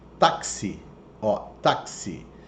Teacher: Esse X tem som de KS